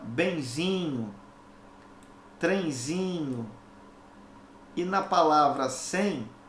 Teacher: ditongo nasal por quê porque repara que é a letra e eu tenho que compreendê-la como um som nasal como se ela tivesse um tio